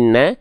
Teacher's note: adalah a berarti dia termasuk ke dalam huruf yang tipis maka huruf nun karena vokalnya adalah a Bukan no tapi na maka dia termasuk ke dalam huruf yang harus dilafalkan dengan keadaan yang tipis